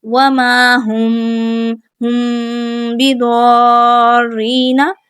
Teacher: میم ساکن ہے اور اس کے بعد با آ گیا، تو یہاں پہ ہم میم ساکن کا رول اپلائی کریں گے، اخفاء شفوی والا ہم یہاں پہ غنہ کر کے پڑھیں گے